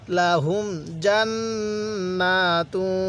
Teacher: এই নুনের মধ্যে গুন্নাহ করে এক আলিফ টান দিব